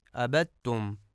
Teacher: ما عبدتم میں عین کو درست نہیں پڑھا جاتا اور حمزہ پڑھا جاتا ہے عبدتم، اور یہ غلط ہے۔